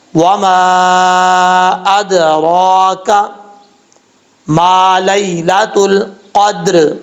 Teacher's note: میم کے آگے الف ہے، 1 الف کی مقدار، اس کو لمبا کر کے پڑھیں گے۔ لام کے بعد یا ہے، یا ساکن، اس کو یا، یہ یا لین ہے، اس کو لمبا نہیں کرنا۔